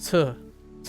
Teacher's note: there's a burst of air that creates that t t sound